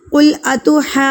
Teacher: جو کو ہم کیوں کھینچیں گے؟ کیونکہ واو ساکن ہے، اور واو ساکن سے پہلے کیا ہے؟ پیش ہے. تو یہ واو مدہ کہلائے گا. ہم اس کو 1 حرکت کے برابر کھینچ کے پڑھیں گے. قل اتحاجو، جیم مضبوطی کے ساتھ اسٹرانگلی وائس ہوگی.